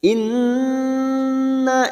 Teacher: Kita tahan selama tiga harakat dan kita dengungkan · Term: Guna musadadah